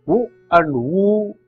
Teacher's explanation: U and U are labials, that is you have to make use of lips to pronounce them